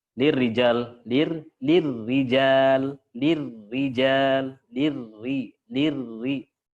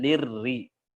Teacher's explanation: Terus ro ketika tasdid, ya sembunyikan getarannya.